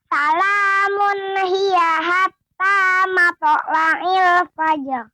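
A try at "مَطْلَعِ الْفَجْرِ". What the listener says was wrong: Masih terdengar mato ya. Mato, tidak mato. Akan tetapi mato ada hamzahnya. Ya, seolah ada hamzahnya di akhir. Mato, tapi mato. Mato la'il.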